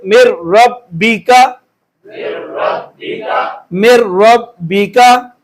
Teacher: تو یہ اب نون ساکن ہے، اگلا لفظ لام ہے، را ہے، تو ہم اس کو پڑھیں گے مر رب بی کا، مر رب بی کا، ٹھیک ہے. ہم نے یہاں پر ادغام کیا ہے لیکن غنہ نہیں کیا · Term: بغیر الغنہ